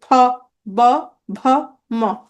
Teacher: দেখো, প, দেখো ঠোঁট একটার সাথে একটা লাগতেছে, ফ, ব, ভ, ম। এগুলোকে বলে ওষ্ঠধ্বনি।